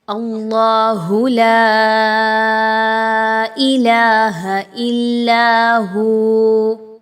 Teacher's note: اس سے پہلے جو حرف آ رہا ہے حمزہ، اس پر زبر ہے، تو آپ یہاں پر اللہ کو پر پڑھیں گے، باریک نہیں پڑھنا، ٹھیک ہے۔ اللہ لا الہ نہیں کہنا، بلکہ اللہ لا۔